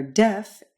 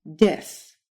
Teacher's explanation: in the English word the very tip of your tongue hits your alveolar Ridge that Ridge right behind your front upper